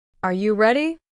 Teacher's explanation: The pitch rises at the end, also used to express mild surprise, or when listing items. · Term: Rising intonation